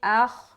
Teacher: हमजा को जब खा से मिलाएंगे, खा को मोटा पढ़ना, अख नहीं बोलना, अख बोलेंगे गलत है, अख अख अख अख, खा मोटा।